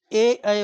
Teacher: ए ऐ वर्ण कंठ तालव्य अर्थात ये दोनों की सहायता से बोले जाते हैं।